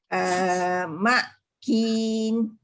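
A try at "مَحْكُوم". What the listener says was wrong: Mahkum. Dia mesti panjang dengan waw. Mahkum.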